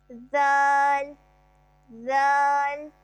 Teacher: ذال حروف لساویہ سیٹ ہے، اور اس کا مخرج ہے زبان کی نوک ثنایا علیہ کا سرا